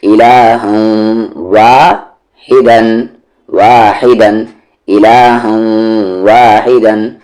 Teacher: آواز کو ناک میں رکھ رہے ہیں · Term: ادغام وتھ غنہ